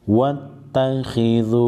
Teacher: حروف مستغلیہ خا کو موٹا پڑھیں گے واو مدہ پر ایک الف کے مقدار کو اس کو کھینچیں